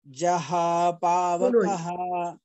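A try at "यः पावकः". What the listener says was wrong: No jaya. Ya yaha. jah jaha yaha japavakaha no ja ya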